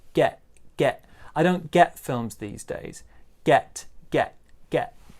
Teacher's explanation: this t here in get is pronounced more of a glottal uh uh sound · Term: glottal sound